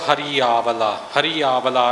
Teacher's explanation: ਰਾਰੇ ਦੀ ਬਿਹਾਰੀ ਹੈ ਇਹਨੂੰ ਹਰਿਆਵਲਾ ਕਰਕੇ ਨਹੀਂ ਬੋਲਣਾ